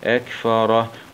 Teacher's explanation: نقف عليها بالسكون العارض مع همس الهاء